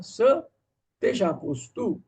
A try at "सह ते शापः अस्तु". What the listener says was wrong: स जहां जहां है वहां सह ते शापः अस्तु, ऐसा पढ़ना है।